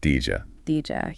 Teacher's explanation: very often in fast speech, did you smushes together to sound like Dija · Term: connected speech